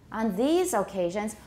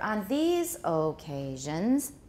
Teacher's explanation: because of the contrastive stress these will go up